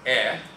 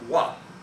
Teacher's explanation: the vowel A went in 2 different directions. It became eh, and it became wa.